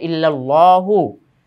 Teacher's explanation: আল্লাহ শব্দের ডানে জবর থাকার কারণে আল্লাহ শব্দটা মোটা হয়েছে